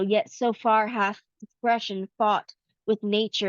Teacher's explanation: an unaccented syllable followed by an accented one